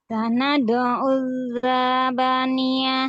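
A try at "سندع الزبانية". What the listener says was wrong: Nah, zanya agak panjang. Auzzaba.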